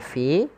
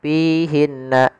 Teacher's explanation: alirkan nafas ketika melafalkan huruf Fa karena salah satu sifatnya adalah sifat hams mengalirnya nafas kesalahan yang terjadi menggantinya dengan huruf P misalkan piinna ini kesalahan